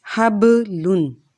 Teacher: با ساکن ہو اس سے پہلے زبر ہو تو ایک بات یاد رکھیں، جب بھی با ساکن ہوگا تو ہم نے اس کی آواز کو ہلکا سا ہلانا ہے